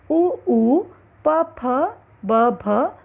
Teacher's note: दोनों होठों की सहायता से उ, प, फ, ब, भ वर्ण निकलते हैं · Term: ओष्ठ्य